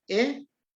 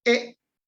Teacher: Vocal corta E. Glotalizada E. Como que se corta el sonido.